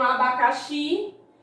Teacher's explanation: a sílaba tônica é a última logo ela se classifica como uma oxítona e ela não é acentuada mas continua sendo uma oxítona aqui